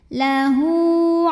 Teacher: Hu ini juga sama hukumnya adalah mad silah qasirah karena ada hak dhamir diapit 2 huruf hidup, huruf setelahnya bukan hamzah ya, maka haknya ini panjang 2 harokat